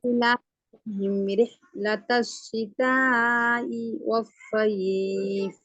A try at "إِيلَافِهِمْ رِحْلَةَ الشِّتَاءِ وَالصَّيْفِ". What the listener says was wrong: நீட்டுறது போதாது, நீட்டுறது நோட் இனா. شتاء والصيف. சித்தா என்று நிப்பாட்ட வேணாம், அது பேல.